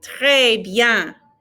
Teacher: Now that R is in the back of our throats. The French R is not up here like the English R.